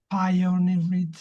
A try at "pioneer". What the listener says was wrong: I did notice that one. So if we forget the ed on the end, so it's pioneer, pioneer.